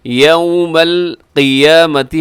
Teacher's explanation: قیامتی میں جو قاف ہے یہ موٹا ہے